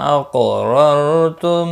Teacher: ثم میم مشدد پر غنہ ہوگا، قاف ساکن پر قلقلہ ہوگا، موٹا بھی پڑھا جائے گا، مستعلیہ میں سے ہے، را زبر کی وجہ سے پر پڑھا جائے گا، اور یہ را ساکن ہونے کی صورت میں پچھلے حرف کے اوپر زبر کی وجہ سے پر پڑھا جائے گا